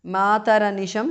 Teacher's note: visarga changes to repha anisham mataranisham because of sandhi